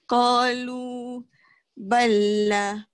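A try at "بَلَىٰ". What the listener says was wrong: Eh, tak mau ada sabdu. Qalu bala.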